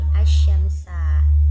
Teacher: Cara membacanya itu apabila ada huruf al-ta'rif bertemu dengan salah satu huruf syamsiyah, maka al-ta'rif diidghamkan atau dimasukkan ke dalam huruf syamsiyah yang ada di hadapannya. Nah, suara alif lam menjadi hilang karena diganti dengan huruf syamsiyah